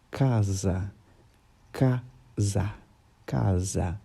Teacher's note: você percebe como o som do a você abre a sua boca você quase não toca sua língua no céu da sua boca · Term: som aberto